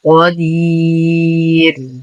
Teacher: نقف على الراء بسكون عارض قبلها حرف مد في المد عارض للسكون يمد بمقدار 2 4 6 حركات وقفا. الراء وقفا تكون مرققة لأنها سبقت بياء، ووصلا تصبح مضمومة فهي مفخمة.